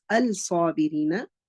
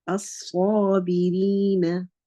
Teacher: When lam sakin of lam or lam ta'arif of the word al is followed by a Shamsi letter, then the lam will merge with the Sad and you will not hear the sound of the lam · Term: idgham